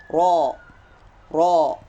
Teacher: Di situ huruf ro berharkat fathah tentunya, maka dibaca tafkhim